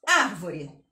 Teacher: Na palavra árvore, o ar, a primeira sílaba é mais forte porque está com acento. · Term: tônica